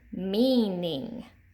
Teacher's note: you hear that long E in the first syllable.